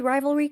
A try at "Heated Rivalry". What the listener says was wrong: There is an R in there.